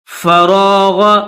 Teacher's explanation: را کو بھی موٹا کریں گے اور غین کو بھی موٹا کر کے پڑھیں گے